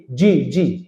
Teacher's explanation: জিহ্বার মধ্যখানে উপরের তালু একটু বাতাসের প্রেসার ক্রিয়েট করে বলতে হয় জিম